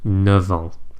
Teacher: Now, as it happens, there's only one example of this, and that is the word neuf, which either means 9 or new, but in both cases, the F sound becomes a V. So for example, 9 ans, meaning 9 years.